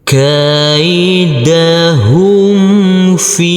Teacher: Huruf fa kita baca panjang dengan panjang 2 harokat karena huruf fa yang berkasroh ini bertemu dengan huruf ya sukun